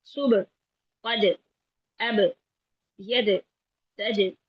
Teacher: इनमें आवाज बिल्कुल नहीं चलती, आवाज बिल्कुल बंद हो जाती है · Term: शिद्दत